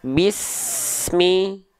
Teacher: Pastikan desisan huruf sin ini terus mengalir sampai dia melafalkan huruf berikutnya, yaitu huruf mim. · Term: sofir